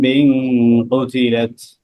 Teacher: কি হয় ইকলাব ইখলাবার হ্যাঁ নুন ইকলাবের সাকিনের পরে বা আসলে এই নুনকে ছোট্ট একটা মিম দ্বারা পরিবর্তন করে পড়তে হয়